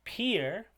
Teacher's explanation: in peer we have a aspirated p appearing between the beginning of the word